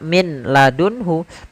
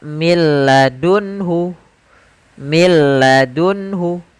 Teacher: Contoh di sini millun hu tidak dibaca min ladunhu tapi langsung ke huruf lam karena nunnya dianggap tidak ada dan diidgomkan ke huruf lam